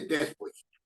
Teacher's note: el tono de voz predominante está en la última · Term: palabras agudas